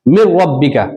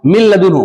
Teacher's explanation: ادغام تو ہو رہا ہے, یعنی ملانا تو ہو رہا ہے, لیکن غنہ کے ساتھ نہیں, بغیر غنہ کے. اسے ادغام بلا غنہ اور ادغام تام بھی کہتے ہیں.